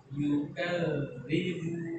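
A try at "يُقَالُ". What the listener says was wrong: Lidahnya keluarkan lagi.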